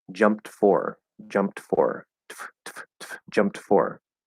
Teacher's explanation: we're gonna do a t and an f like you're going to hear both of those